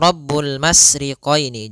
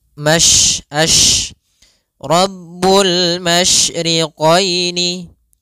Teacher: Tafasyi adalah salah satu sifat yang terkandung di dalam huruf shin, yaitu menyebarnya suara. Sehingga jangan dibaca Rabbul masriqaini, jangan dengan huruf sin, tapi dia huruf shin.